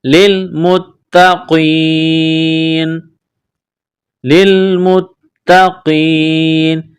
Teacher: کو تا کے ساتھ ملانا ہے، تا میں سختی کرنی ہے، قاف کو موٹا کرنا ہے، قاف کو یا کے ساتھ ملائیں گے